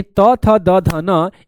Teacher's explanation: इन तमाम वर्णों के उच्चारण स्थान क्या होते हैं प्यारे बच्चे? तो ये दंत होते हैं।